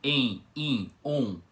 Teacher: quando falamos as vogais nasais, que são em, in, on, a nossa língua não encosta nos dentes. Então, no final, elas só ficam pronunciadas com o ar saindo pela boca e pelo nariz.